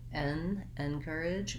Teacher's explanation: help you to pronounce the word encourage correctly and easily so the word encourage has second syllable stress that means the cur syllable is long and the in and edge syllables are short and unstressed